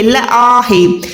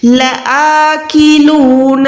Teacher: अलिफ खड़ी जबर आ करके 1 सेकंड लंबा करेंगे। ल आ भी नहीं है, ल आ है।